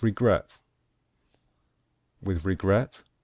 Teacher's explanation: with regret we stress the last syllable the final syllable